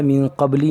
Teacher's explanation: قاف آ رہا ہے، اس لیے ناک میں آواز کو گنگناہٹ کے ساتھ ادا کریں گے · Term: اخفا حقیقی